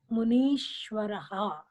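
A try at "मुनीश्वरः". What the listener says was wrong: Okay, good.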